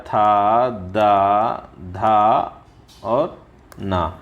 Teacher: दंत ध्वनि में त आता है था द धा और ना ये सब दंत ध्वनि में आते हैं